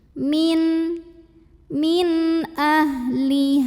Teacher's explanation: mad thobii dhohiri karena ada Alif yang didahului baris fathah maka huruf h nya ini kita panjangkan Cukup dua harokat saja · nun sukun ini kita bunyikan dengan bunyi n jelas tidak perlu ditahan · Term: izhar halqi